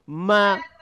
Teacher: মা বলতে গিয়েও নাকের মধ্য থেকে গুনগুন একটি সাউন্ড আসে। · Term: গুন্না